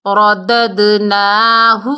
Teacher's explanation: را کو پر پڑھیں گے اور دال کی ڈبل ساؤنڈ آئے گی